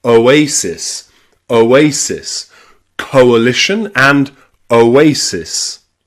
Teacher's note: If they are different syllables, they will be two separate sounds like in coalition.